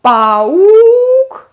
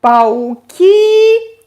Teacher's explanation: And E becomes stressed. Again, Russian stress is flexible, so паук, singular. U is stressed, пауки, E becomes stressed.